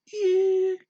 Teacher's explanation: It doesn't change its pitch, it just stays high. Ear. And it's long, it's a full beat. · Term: tone 1